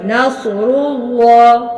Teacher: منہ بھر کے اچھے سے موٹے سے اللہ کا نام موٹا پڑھنا ہے